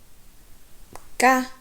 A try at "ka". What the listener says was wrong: mets le coup de glotte, ka. Ferme ta bouche, tu dis ça. C'est quel ton?